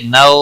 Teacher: نو واولین ہے تھوڑا نرمی کے ساتھ کھینچ کر ادا کریں گے